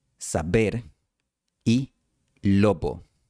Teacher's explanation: la letra B siempre se pronunciaba B, cerrando los labios completamente, incluso entre vocales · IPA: [sa'beɾ]